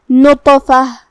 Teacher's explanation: جو کہ اس پہ جزم ہے تو یہاں طا کا حکم ہے قلقلہ. قلقلہ کا معنی ہے حرف ساکن کو ہلانا، لہذا ہمیں طا کو ہلاتے ہوئے یہ کلمہ کو ادا کرنا ہے